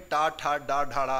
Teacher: क्योंकि ये मूर्धा से व्यंजन निकलते हैं, इसलिए मूर्धन्य कहते हैं